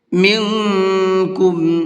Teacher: اخفا کہتے ہیں ناک میں آواز کو چھپا کر کے پڑھیں گے۔ کیوں؟ اس لیے کہ یہاں پر یہ نون ساکن ہے اور نون ساکن کے بعد میں کاف ہے۔